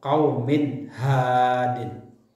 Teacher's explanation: melafalkan huruf-huruf izhar tanpa disertai dengan dengung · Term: izhar khalqi